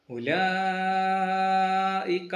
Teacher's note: ഇതിനെ നാലഞ്ച് ഹർക്കത്ത് നിർബന്ധമായും നീട്ടി തന്നെ ഓതാം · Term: മദ് മുത്തസിൽ